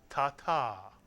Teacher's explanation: the accent tends to be placed on the last syllable